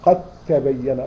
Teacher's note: الدال والتاء أصبح زي الحرف الواحد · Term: الادغام